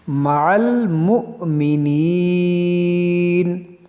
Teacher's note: جو حمزہ ہے یہ اس کو جھٹکا دے کر پڑھیں گے، اس واو کو نہیں پڑھیں گے